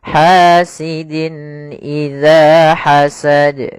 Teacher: ada bacaan izhar, yaitu suara tanwinnya jelas, izhar. Harus dibaca dengan jelas suara tanwinnya